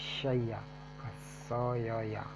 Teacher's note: तालव्य स और मूर्धन्य स नियमित रूप में नियमित स में दंत स में बदल गया।